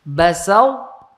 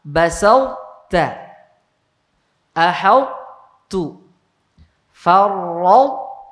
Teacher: toknya dimasukkan ke ta, tidak diqalqalahkan, tapi toknya tetap terbaca sifat itbaqnya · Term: idgham naqis